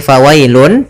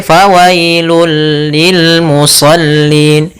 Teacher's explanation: Pada dasarnya tanwin itu an, in, ataupun un itu adalah bunyi nun sukun, bunyi nun yang dimatikan atau bunyi n. Maka ketika dia masuk, bunyi n-nya hilang, langsung masuk ke hurufnya yaitu bunyi lam. Maka fawailul, bukan lagi fawailun tapi fawailul lil musallin. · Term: idgham bila gunnah